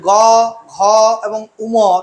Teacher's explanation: গ ঘ এবং উম এই বর্ণগুলো উচ্চারণ করলে স্বরতন্ত্রীর কম্পনজাত সুর অনেক বেশি হচ্ছে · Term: সঘোষ বর্ণ